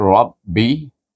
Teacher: Ra dibaca dengan tafkhim, tebal. Gabungkan dengan ba yang bertasdid